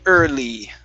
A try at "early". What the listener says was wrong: So even when you did that, you said D early and pronounced a D.